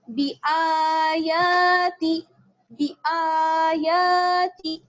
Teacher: دیکھیے میں آ اور یا دونوں کو کھینچ رہی ہوں